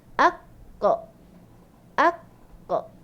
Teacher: Dia punya qalqalah dia akan lantun bunyi o.